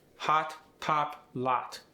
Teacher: The short O goes to ah.